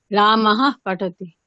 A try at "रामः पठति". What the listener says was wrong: হ্যাঁ, আর ওই রামः একটা যে দীর্ঘ নিঃশ্বাস দরকার নেই আমাদের। রামः ব্যাস। রামः পঠতি। দীর্ঘ নিঃশ্বাসও ফেলতে হবে না, সিম্পল হকার উচ্চারণ করুন না, রামः পঠতি।